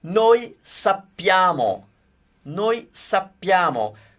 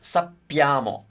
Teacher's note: Be careful with the double P because we want to hear it.